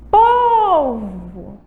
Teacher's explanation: O pou é a sílaba tônica e ela é uma palavra paroxítona. Terminou com O.